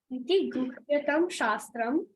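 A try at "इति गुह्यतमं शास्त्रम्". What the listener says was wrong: Guhyatamam. Not tam. Tamam. Iti guhyatamam shastram. Iti guhyatamam shastram.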